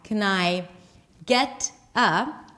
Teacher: Canai, we connect words together. So the end of can becomes the beginning of the word I.